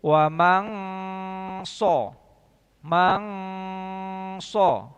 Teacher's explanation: Tidak ada nempel nun mati ketika kita baca, tidak nempel ke sod. Tapi memang benar-benar di sana ada dengung. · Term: ikhfa